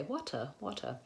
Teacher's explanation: I'm not using what's called an aspirated tea so a tea with a puff of air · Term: flap T